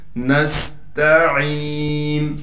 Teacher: نون کو سین سے ملائیں گے، سین میں سٹی ادا کریں گے، تا کو باریک کر کے پڑھنا ہے، عین کے بعد یا مدہ ہونے کی وجہ سے عین کو ایک الف کی مقدار کھینچیں گے